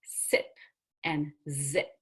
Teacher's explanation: then we have s and Z as in sit and zip they use the tongue tip and a tooth ridge